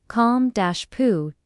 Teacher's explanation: The second syllable is stressed. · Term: Word stress